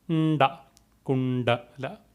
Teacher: it is to be pronounced with rolling your tongue up, touching the top of your mouth with the bottom of the tongue or with the tip of the tongue